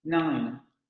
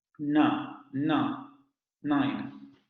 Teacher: Cuerdas vocales vibrando, se genera la articulación alveolar. Vean, la lengua sube a ese bordecillo que les digo, la parte de los alvéolos, y se abre la cavidad nasal para sacar el aire por ahí. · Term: nasal alveolar sonoro